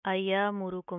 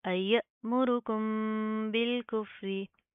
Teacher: अयमुरुकुम बिल कुफ्री, अयमुरुकुम बिल कुफ्री। हमजा के ऊपर आपने झटका देना है, इसको आप इस तरह नहीं पढ़ेंगे अयमुरुकुम, नो।